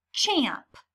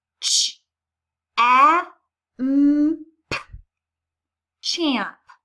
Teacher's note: lips are coming together and forcing a puff of air out